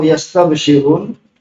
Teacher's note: Sin itu adalah huruf rikwah maka dia lebih panjang waktunya